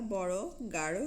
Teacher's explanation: বাংলা বড় গাঢ় শব্দের ডয়বিন্দু র হসন্ত ধ্বনি তাড়িত। দেখো ডয়বিন্দু র হসন্ত উচ্চারণ করার সময় জিহ্বাটা উল্টে যায়, সামনের অংশটা উল্টে যায় এবং উপরে পাটির দাঁতের মূলে একটি মাত্র টোকা দেয়।